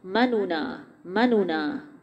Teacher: لا تأمنونا، جسے بہت ڈیٹیل میں بھی ہم نے دیکھا، لا الف باریک ہوگا، تا آواز بند ہوگی، منونا، منونا، جو دو نون اس میں سے پہلے نون کو پیش کے ساتھ پڑھیں گے لیکن اس حرکت کو ہم 1/3، اس پیش کو پورا نہیں پڑھیں گے، 1/3 پڑھیں گے، اس طریقے کو اظہار محروم کہا جائے گا۔